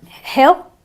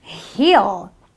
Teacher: On the other hand, you have a heel, so it's a long E sound. Okay, so you have a hill, a short eh sound, and you have a heel, a long E sound